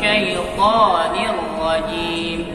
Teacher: Dua harakat saja, syaitani, jangan terlalu panjang